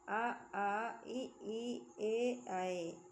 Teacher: जिन स्वरों के उच्चारण में ओठ गोलाकार नहीं होते हैं उन्हें अवरत मुखी स्वर कहते हैं।